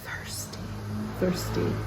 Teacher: thirsty which is the breath version of th